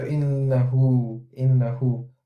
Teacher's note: The diminutive waw is the indicator that the Mad is to be stretched two haraka with a dhamma haraka